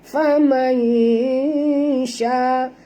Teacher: Itu bunyi dengung saja, dia tak boleh dengung saja, dia kena sembunyikan, sorokkan bunyi nun ke dalam shin, baru jadi ikhfa. Faman sya. Jadi tengok lidah kita mesti berada di tengah-tengah rongga mulut ya, nampak dia tak naik atas, tak turun ke bawah.